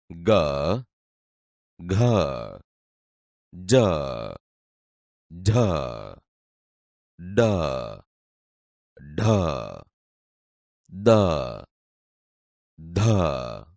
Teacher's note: નાદતંત્રી સહેજ વધુ કંપનની અવસ્થામાં હોય ત્યારે જે ધ્વનિ ઉત્પન્ન થાય તે ઘોષ ધ્વનિ તરીકે ઓળખાય છે.